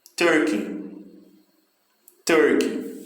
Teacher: Também, novamente, o início da palavra, né? A primeira sílaba, tem mais força.